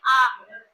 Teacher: जब आप आ बोल के देखिए तो आपका मुंह क्या होगा आपका मुंह पूरी तरह से खुल जाएगा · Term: विवृत स्वर